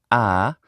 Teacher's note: the open central unrounded vowel is ah